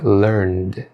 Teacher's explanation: Como são verbos que terminam com sons vozeados, a sua pronúncia deve ser com um som sutil de D.